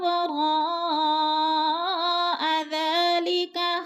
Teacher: را پہ مد متصل ہے، 4 الفی مد ہے، 4 الف کے برابر کھینچ کر پڑھنا ہے. ذا کو 2 الف کے برابر کھینچ کر پڑھنا ہے کیونکہ کھڑی زبر ہے، کھڑی زبر حروف مدہ کا قائم مقام ہوتی ہے.